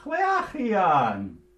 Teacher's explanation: medial H, the H in the middle of a word, goes ch